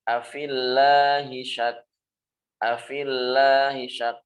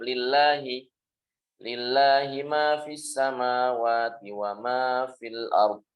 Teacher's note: Dibaca tarqiq, dibaca tipis ketika lafzul jalalah ini jatuh setelah kasroh.